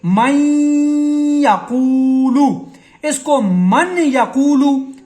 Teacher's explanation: نون کی آواز کو یا میں مکس کریں گے اور پھر یہاں پر ہم غنہ 1 الف کی مقدار کے برابر کریں گے، نون کی آواز کو ناک میں رکھیں گے. جیسے من یقولو، اس کو من یقولو، ٹھیک ہے، یا می یقولو نہیں پڑھیں گے. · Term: ادغام